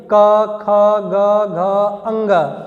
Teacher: तो ये जो क वर्ग है इनका उच्चारण स्थान कंठ होता है। यहाँ जरा स्पर्श करके आप देखिए क ख ग घ अंग, यानी कि ये वर्ण क्या हो रहा है, हमारे कंठ को स्पर्श करके निकल रहे हैं। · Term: कंठ ध्वनियाँ